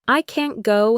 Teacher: I can go has a reduced quick keen. I can't go has a clearer longer a sound and more stress on the word even if the final t is very soft.